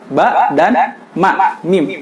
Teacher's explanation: Yaitu dari bibir atas dan bawah bertemu dan tertutup ya. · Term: huruf mim dan ba